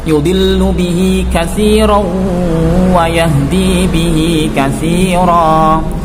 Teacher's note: Sehingga cara membacanya adalah dimasukkan ke huruf wawu dengan disertai dengung. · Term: idgham bi gunnah